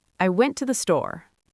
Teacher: to became tu. Very weak, very quick.